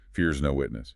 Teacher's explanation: Notice the stress on fears and witness.